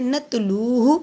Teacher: لو کو لمبا کریں گے، جزم والی واو سے پہلے پیش ہے. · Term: حروف مد